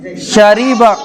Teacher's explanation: निकालो जुबान के बीच का हिस्सा और ऊपर के मुकाबिल तालु से। जुबान का पेट है नी, वहां से और उसके तालु से बोलो शरीबा, जुबान लगाना शरीबा।